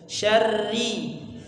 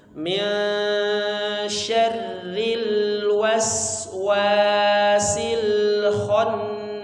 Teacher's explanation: Takrir atau getarannya itu sedikit ya